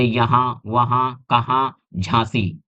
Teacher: इनका जब हम उच्चारण करते हैं तो देखिए आवाज जो है हमारी ध्वनि है वो नाक से निकलती है। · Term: अनुनासिक